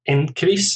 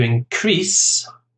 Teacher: As an aside, in terms of pronunciation, often you get nouns and verbs which are the same word, but there's a difference in pronunciation. With the noun, you tend to stress the first syllable. For example, increase, an increase is a noun, and to increase, the stress on the second syllable is the verb.